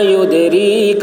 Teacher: دال میں قلقلہ، را باریک ہوگی، کاف بھی باریک